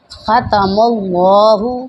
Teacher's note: میم پر زبر ہے اور یہاں پر اللہ کا نام ہے، اس لیے اس کو پر کر کے پڑھیں گے